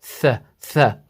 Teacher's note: You're using the tip of your tongue with the front upper teeth. Th, th. The difference is that with tha, you're blowing out some air.